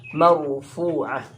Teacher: Marfu'ah, ra sukun didahului fathah, itu dibaca tebal.